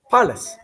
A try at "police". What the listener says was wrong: Oh, now you're saying palace, like the castle. Police. So the ending sounds like L-E-E-S-E. Lease. Police.